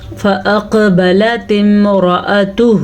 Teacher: را کو پر پڑھنا ہے کیونکہ را کے اوپر زبر ہے